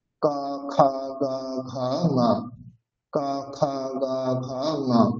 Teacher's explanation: এদের উচ্চারণ হচ্ছে একই জায়গা থেকে, কণ্ঠ থেকে